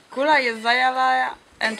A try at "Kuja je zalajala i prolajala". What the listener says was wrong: Ma kakva kula? Kuja?